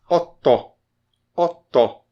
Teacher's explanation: E a terceira vogal aberta é o ó. Não tem acento, mas é aberto